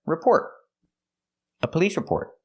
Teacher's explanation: And the T at the end of report is a stop T.